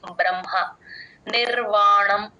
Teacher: హ కింద మ వత్తు ఉంది కాబట్టి ఫస్ట్ మా చెప్పి తర్వాత హ చెప్తాం